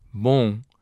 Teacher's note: in pronouncing it, you do not close your lips on the final M